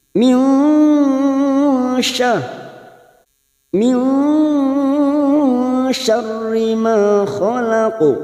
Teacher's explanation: Nun sukun bertemu shin, hati-hati ini huruf shin, jangan samakan dengan sin. Huruf shin lebih tafasyi